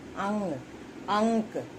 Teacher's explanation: ये अनुस्वार है जो नाक से ज़्यादा हवा निकलती है, मुंह से बहुत कम। और अनुनासिक में नाक और मुंह से दोनों ज़्यादा, मुंह से ज़्यादा नाक से कम, और इसमें नाक से ज़्यादा।